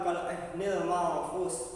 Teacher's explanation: Pada kalimat terakhir manfus, di situ terdapat hukum bacaan ikhfa, di mana nun mati bertemu dengan huruf salah satunya yaitu fa